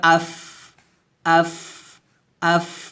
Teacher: ফা কিন্তু হামসের হরফ এখানে হামস করতে হবে